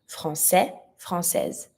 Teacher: every time that it's finishing with an S, the S is mute. But if you put that feminine, the E is always mute in the feminine word.